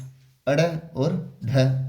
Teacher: हिंदी में उत्क्षिप्त या विकसित ध्वनियां दो होती है अड़ और ढ